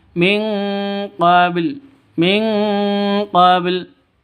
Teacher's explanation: samar didengungkan, siap-siap ke huruf qafnya ditambah ng. Ming, seperti itu bacanya ya.